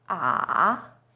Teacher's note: Third tone, 三声, is even lower. It first dips down, then rises.